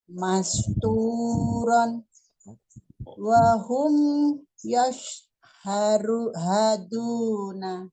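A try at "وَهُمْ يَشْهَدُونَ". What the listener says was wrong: Oke, jadi mim sukun di sini nih jangan diputus. Wahum yash, ya, karena mim sukun masih jalan dia suaranya. Plus dengungnya juga masih ada dikit gitu. Wahum yash, wahum yashhaduna gitu.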